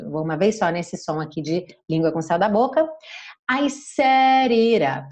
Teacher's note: Set it up, ele reduziu os dois T's